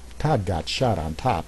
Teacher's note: The ah sound, it's considered the most open sound. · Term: open vowel